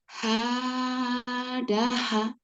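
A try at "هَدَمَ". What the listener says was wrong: Hadama. Bukan hadaha ini mim ya. Hadama.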